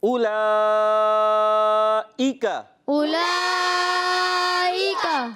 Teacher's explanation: حمزہ کی ادائیگی کلیئر کرنی ہے, عین نہ ہو جائے, یہ آپ نے خیال رکھنا ہے.